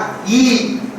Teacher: இப்போ vocal cord ஈ சொல்லல, என் உதட்ட நான் விரிச்சதால அது ஈ ஆச்சு